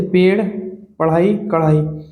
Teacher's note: इसमें जीभ के ऊपर उठकर झटके से नीचे आती है